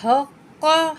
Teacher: हा निकालेंगे, काफ के साथ मिला के पढ़ेंगे और काफ को मोटा पढ़ेंगे।